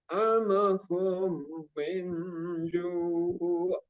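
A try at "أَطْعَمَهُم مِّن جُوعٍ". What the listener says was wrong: Di humnya ditambahin lagi sedikit. Ata'amahum min minnya juga itu maksud ikhfa. Nun sukun bertemu dengan jim.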